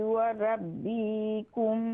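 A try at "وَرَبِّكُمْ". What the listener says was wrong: व रब्बिकुम नहीं है, बा को शॉर्ट साउंड करेंगे। व रब्बिकुम मा मिन दाब्बह इल्ला हुवा आखिज़ुम बिनासियतिहा। बा को ना खींचे, बा को शॉर्ट साउंड करेंगे।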